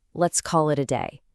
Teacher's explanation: Word by word, it's, "let's call it a day." Here we have a chain reaction. First, the final L sound in call connects to the I in it, call it. Then, the T in it does that flap T thing we just learned, connecting to the next word, a, ita.